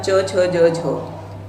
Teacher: तो देखिए जब च छ झ झ आया है तो इसका उच्चारण स्थान क्या रहेगा, तो यहाँ मूर्धन्य नहीं होगा, तो च छ झ का उच्चारण स्थान यहाँ पर आपका तालु रहता है